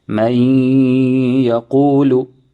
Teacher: So there is merging of the noon into the ya with ghunnah.